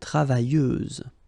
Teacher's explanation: Feminine form, travailleuse, same rule and same phonetical thing. You don't pronounce the final S, so you get travailleuse. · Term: final S, not pronounced